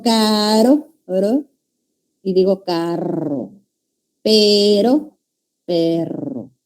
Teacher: En las vibrantes hay encuentro de los articuladores. Y es como que vibrara, ¿no? Entonces, las dos son sonoras.